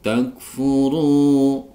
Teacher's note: Lau takfuru, furu ini ro tebal karena ada ro bertemu dengan dhammah, takfuru, jangan dibaca ru tapi takfuru ya.